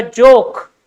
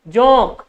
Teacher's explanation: इस ओ के साथ में जो नाक से साउंड आ रहा है